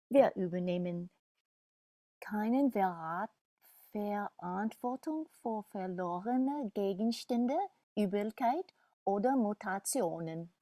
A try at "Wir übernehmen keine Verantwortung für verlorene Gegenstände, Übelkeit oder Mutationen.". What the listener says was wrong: Genau.